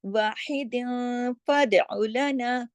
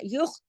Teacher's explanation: दो जेर की तनवीन है लेकिन उसके बाद फा आ रहा है तो यहाँ इख्फा हो रहा है